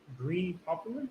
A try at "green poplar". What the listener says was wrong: Not popular, poplar. Poplar. Green poplar. Poplar. Poplar.